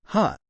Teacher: said before it is just a gentle tap of sound ha the first h of ha is very lightly tapped